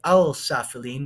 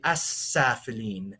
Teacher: the L sound disappears and the S sound from the sin becomes more pronounced